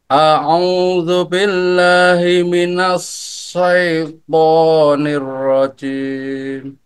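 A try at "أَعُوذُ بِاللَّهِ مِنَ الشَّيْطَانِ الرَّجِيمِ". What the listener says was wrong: Oke, kurang napasnya sekali lagi. Ingat maharajnya dari mana? Dari tengah lidah menempel ke langit-langit atas. Nash. Dan penghamburan apa namanya? Napas paling banyak. A'udzu billahi gitu ya. Minasyai.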